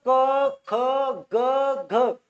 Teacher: क म्हणजे डायरेक्ट कंठातून बाहेर येत होती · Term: कंठे वर्ण